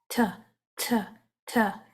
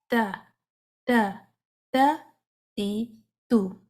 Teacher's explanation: آپ نے فرنٹ کے جو 2 دانت ہیں اس کی جڑوں کے ساتھ، ان مسوڑوں کے ساتھ زبان کا یہ والا حصہ لگائیں گے، زبان فلیٹ رہے گی اور تا تا تا وہاں سے ادا کریں. میک شور کریں کہ تا میں سانس جاری نہ ہو. تا تی تو، اگر اس کے ساتھ سانس جاری ہوگی تو آواز کچھ اس طرح سے آئے گی، تھا تھا تھا یوں.